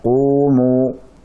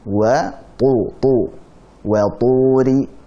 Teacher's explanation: Itu lebih tebal daripada qumu. Jadi qu tebal dia, akan tetapi kalah tebal dengan tu.